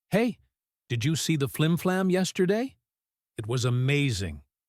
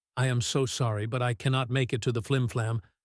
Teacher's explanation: Listen to my voice. It was high, energetic, and fast. · My voice is lower, slower, and sad.